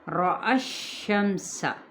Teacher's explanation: را اپنے زبر کی وجہ فتحہ کی وجہ سے پر پڑا جائے گا۔ حمزہ کی زبر کو باریک ادا کرتے ہوئے شین کے ساتھ ملائیں گے۔